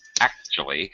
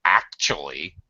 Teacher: What you don't hear is a T sound at all. So actually, this is a U.